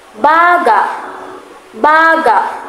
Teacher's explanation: Kapag ang diin ay nasa huling pantig, nangangahulugan nitong bahagi ng katawan.